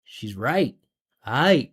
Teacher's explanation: I'm just going up with the pitch into the vowel, not with a consonant.